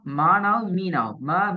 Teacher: எங்களோட உதடுகள் ஒன்றோடு ஒன்று மூடினால் தான் மீ ரெண்டு எழுத்தும் வருது